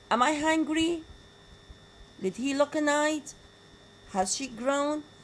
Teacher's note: positive yes no question also again with the falling tone is another but very informal way of expressing a strong positive conviction